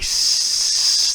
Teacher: that's our voiceless sound, where our vocal folds are just held open. We're not trying to vibrate them, we're just holding them open.